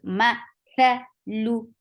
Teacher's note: The makhraj of tha is touching the tip of your tongue to the upper, the edge of your upper two teeth